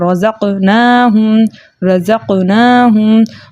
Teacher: क़ाफ़ को भी मोटा पढ़ेंगे। नून के ऊपर खड़ा ज़बर है, खड़े ज़बर को 2 हरकत मकदार खींच कर पढ़ते हैं। और जो है हा को ऊपर पेश है, पेश को बगैर खींचे बगैर झटका दिए मुतवस्सित और मारूफ तरीके से पढ़ते, लेकिन आगे जो है मीम साकिन है, साकिन हर्फ की आवाज़ इसके मखरज में रुक जाती है। · रॉ के ऊपर ज़बर था इसलिए हमने रॉ को मोटा पढ़ा